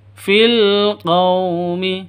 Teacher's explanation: Fil alif lam qamariyah tandanya sukun. Qaw sifat lin lentur lemes, tidak boleh disentak, tidak boleh didengungkan.